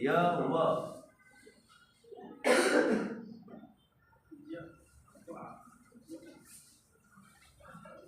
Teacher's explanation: अर्ध स्वर कहते हैं क्योंकि इसके उच्चारण में मुख द्वार आधा खुला होता है